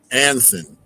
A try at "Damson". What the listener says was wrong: Damson, D with a D. D.